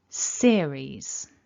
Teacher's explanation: And our strongest syllable, indicated by the blue mark at the top on the left, is the first syllable. So when we say the word series, we want seer to be stronger. Series. So hopefully you can feel there's a bit more emphasis at the beginning.